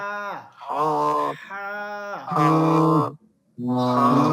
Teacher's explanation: আর এই হাটা কণ্ঠনালীর মধ্যখান থেকে মধ্যখান থেকে হবে। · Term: লম্বা হা